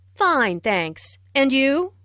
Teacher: Notice the rising intonation on and you?.